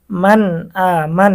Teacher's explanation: এখানে নুন সাকিনের পরে ইজহারের হরফ হামজা এসেছে, গুন্না ছাড়া স্পষ্ট পড়তে হবে।